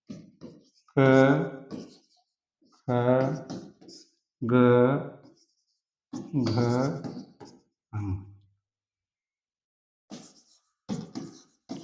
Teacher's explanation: क वर्ग का उच्चारण कंठ से होता है।